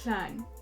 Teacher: air is flowing freely into the cheeks, and as a result, we have like a slushy sounding S. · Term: lateralizing